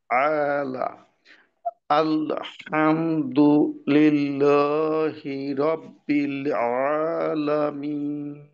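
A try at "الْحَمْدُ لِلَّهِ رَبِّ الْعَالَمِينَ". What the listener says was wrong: আপনি দালের উচ্চারণ করার পর একটু থামার মতো মনে হচ্ছে আরকি।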